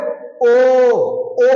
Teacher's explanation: ओ ओ बोल रहे तो हमारे होठ बाहर आ रहे हैं ओ और गला सीधे आवाज आ रही है तो गला यानी कंठ और होस्ट बाहर आ रहे है ओठ